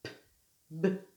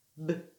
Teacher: C'est la même façon de prononcer la consonne P, B. Sauf qu'il y en a une qui est sans son et l'autre qui est avec son.